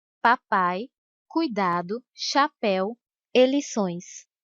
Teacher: O som mais forte vem antes, por isso é chamado de ditongo decrescente. Vai do som mais forte e cai para o som mais fraco.